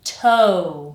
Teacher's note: So by the time you finish saying this syllable, your mouth should be in an ooh position.